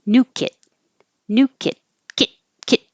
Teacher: the vowel gets a little shorter because t is voiceless, so new kit, kit gets short.